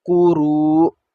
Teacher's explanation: کیونکہ یہاں پر پہلے تو دیکھیں یہ مد ہے، اس کو کھینچنا ہے، را واو پیش رو اور مد ہے اس کے اوپر کھینچنا ہے، لیکن آگے حمزہ پر جب جزم آ جائے گا تو اس کو ہم نے سنا تھا پہلے بھی، پڑھا بھی ہے کہ حمزہ پر جب جزم آ جائے تو اس پر ہم نے جھٹکا دے کے پڑھنا ہوتا ہے